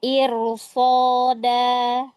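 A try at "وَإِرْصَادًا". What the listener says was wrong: Sekali lagi. So, lebih angkat lagi. Ya, wa sotnya juga ya, tafkhim ya.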